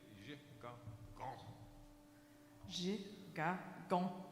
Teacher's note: in our language, you don't put a glottal stop into your throat